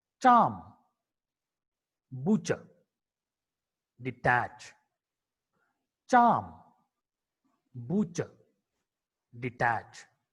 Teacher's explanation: Ch is a voiceless palato-alveolar affricate consonant.